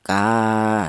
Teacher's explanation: panjangnya mad thaobi yaitu satu alif atau dua harakat atau dua ketukan